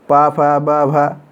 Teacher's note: तो हम यहाँ पर कह सकते हैं कि ये पवर का उच्चारण होठ से होता है।